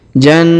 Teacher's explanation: ditahan dan ditekan ya pada huruf na yang berharakat tasdid